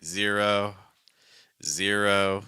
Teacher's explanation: She's not saying zero and then the breath cuts. No, the breath continues, right? Zero, zero.